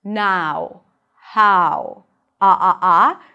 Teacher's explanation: In British English, it's going to be pronounced more with an open ah sound. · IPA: /naʊ/